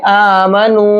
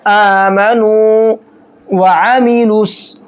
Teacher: अगर वाव साकिन से पहले पेश होता है तो वो वाव मद्दा होता है और वाव मद्दा को एक अलिफ के बराबर खींच करके पढ़ा जाता है। तो इसको खींचेंगे आमनू।